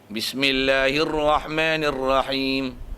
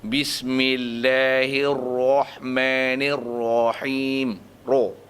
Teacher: Dia ada nama tafkhim, maksudnya sebutan dia nanti penuh mulut.